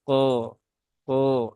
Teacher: huruf q ini dia huruf istilla maka dia tebal ya pastikan suaranya ko ko ya dinaikkan sini ya pangkal lidahnya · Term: huruf tebal